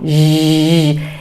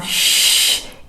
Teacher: quando eu faço X, eu não ligo o meu motorzinho da garganta, minhas pregas vocais.